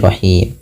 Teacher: Sukun nya bukan sukun asli. Awalnya rahimu dimatikan menjadi rahim. Nah, sebelum huruf sukun arid ini ada huruf mad berupa alif, wau atau ya.